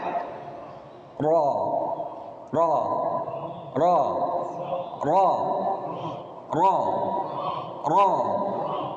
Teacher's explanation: kalau lam lewat samping, kalau ra dia suara kita berkumpul berada di tengah ya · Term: huruf ra